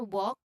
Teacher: And we have the silent one here, walk. So there's a silent L in talk as well as in walk.